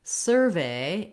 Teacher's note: For survey as a noun, we have first syllable stress, and so this sur syllable is stressed